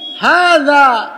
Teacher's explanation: জালের উচ্চারণ তো জিহ্বার আগাকে দাঁতের আগায় লাগায় বলতে হয়